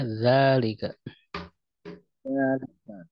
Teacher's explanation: Za-nya ini di dua harokat ya, panjang zalika. Tapi dalam penulisannya itu tidak ditulis alifnya.